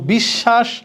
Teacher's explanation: শব্দের মাঝখানে এবং শেষে বফলা থাকলে যে বর্ণের নিচে ব ঝুলে থাকে ওই বর্ণটা 2 বার উচ্চারণ করতে হবে। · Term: দ্বিত্ব